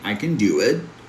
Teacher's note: I'm going to emphasize the verb do. So, all you have to do is take the a sound in can and change it to a schwa sound. Remember that uh sound we have. · For example, if I say I can do it, I'm not going to emphasize the word can. I'm going to emphasize the verb do. So, all you have to do is take the a sound in can and change it to a schwa sound.